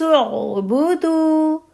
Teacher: دال کی پیش کے بعد آگے آپ کو واو ساکن دکھ رہا ہے تو ایسے میں دال کی حرکت با کی حرکت سے ڈبل ہوگی، ٹھیک ہے. تب آپ آگے را پہ جائیں گی.